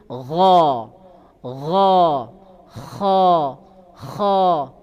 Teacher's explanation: dua huruf ini sama-sama tebal. Jadi keluar dia seolah-olah memenuhi mulut ini. · ujung tenggorokan. Jadi tenggorokan bagian atas. Ini tempat keluarnya nanti ghain dengan kha. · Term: ghain dengan apa? Kha